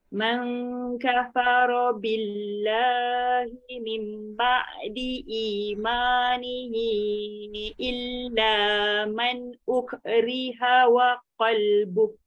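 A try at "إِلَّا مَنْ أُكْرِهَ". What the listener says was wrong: Ambil balik illa man uk. Jangan uk eh, jangan bunyi ke.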